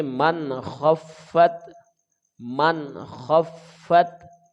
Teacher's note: نون ساکن کے بعد خا حروف اظہار ہے تو بغیر غنہ کے اس کو ہم ادا کریں گے